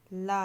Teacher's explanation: पार्श्विक व्यंजन ला है